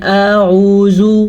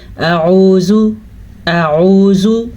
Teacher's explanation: حمزہ اور عین دونوں کو الگ مخرج سے نکالنا ہے، لیکن دونوں کے درمیان میں گیپ نہیں ہونا چاہیے، کیونکہ حمزہ کے اوپر زبر ہے، حمزہ زبر ا، اور عین پیش واو، آگے عین کے ساتھ واو مدہ ہے، تو اس لیے دونوں کے درمیان میں گیپ نہیں ہوگا اور دونوں کا مخرج بھی الگ الگ ہوگا۔